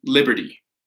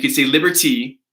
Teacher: where I'm from in the United States, I drop the T.